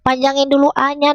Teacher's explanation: Wala panjangkan lanya empat atau lima harakat.